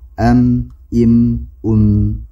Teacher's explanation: ketika kita membunyikan atau mengucapkan mim, maka suara kita atau udara kita keluar melalui rongga hidung. Am, im, un, jadi melalui gunah melalui hidung. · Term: dengung